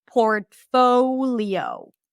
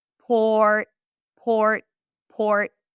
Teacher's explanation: the first one is the or as in core, because we have an R right after.